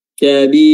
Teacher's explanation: huruf Kaf juga memiliki sifat hams yaitu keluarnya nafas maka ketika kita melafazkan huruf Kaf maka harus dibaringi juga dengan keluar sedikit eh nafas atau udara · Mad arid lis sukun dari awal kita sudah baca 4 harokat, maka di sini kita harus konsisten membacanya juga dengan 4 harokat. Bisa 2 dan bisa 6, namun harus konsisten.